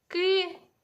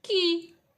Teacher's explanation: ми тверді приголосні перетворювали на м'ягкі